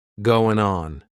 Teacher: we're going to drop that G at the end of the word going.